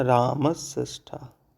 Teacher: उदाहरण देखें कैसे दंत सा मूर्धन्य सा में परिवर्तित हो रहा है।